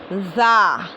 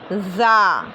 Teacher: दोनों दांत ऊपर नीचे के दांत मुंह बंद रहेगा और पीछे से जो है ज़बान की नोक लगेगी 4 दांतों के किनारे से, है ना। ऊपर के 2 दांतों का किनारा, नीचे के 2 दांतों का किनारा, दोनों को करीब लाएंगे और पीछे से ज़बान की नोक लगाएंगे।